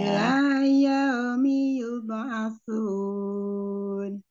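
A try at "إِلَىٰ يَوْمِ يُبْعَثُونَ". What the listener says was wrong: Coba mau maunya yau ya, bukan yaumi, bukan ao tapi au. Ila yaumi yub'asun.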